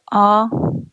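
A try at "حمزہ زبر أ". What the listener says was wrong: آ آ آ. جلدی پڑھیں گے، آ کھینچیں گے نہیں. آ.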